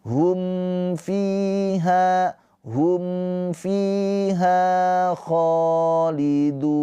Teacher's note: Mim sukun bertemu selain mim dan ba. Ini adalah izhar syafawi. Mimnya dibaca dengan jelas. · Mimnya dibaca dengan jelas. Fi panjang dua harakat karena ada ya sukun. Ya, sukunnya ini sebelum kasrah ini adalah mad th'i.